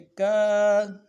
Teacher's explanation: کاف کے بعد الف مدہ ہے، ایک الف دال میں کھینچیں گے